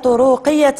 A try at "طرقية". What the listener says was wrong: جيد، هر هذيك طرقية ما كنقراوش طرقية. فلا سلامة طرقية. طرقية ما كاينش الواو قدام الراء.